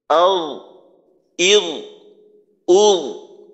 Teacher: জজম দিয়ে আল, ইল, উল, যেন আল এইভাবে আওয়াজটা মাখরাজে যাওয়ার সাথে সাথে বন্ধ হয়ে না যায়, চালু রাখতে হবে, যেহেতু রিখওয়া সিফত। আল, ইল, উল।